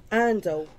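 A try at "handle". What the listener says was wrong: andle. I love that the Brits do not pronounce H's at the beginning of words.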